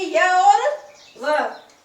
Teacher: संघर्षहीन, मतलब उसको बोलने में कोई संघर्ष नहीं है।